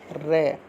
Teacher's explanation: रे को जब आप बोल कर देखोगे तो रे को बोलते वक्त आपकी जीभ जो है वो लुंठित यानी कि गोल आकार में पीछे की तरफ घूम जाएगी। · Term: लुंठित व्यंजन